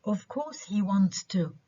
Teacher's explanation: in this sentence we stress wants to لأنه برضو في suppressed syllable.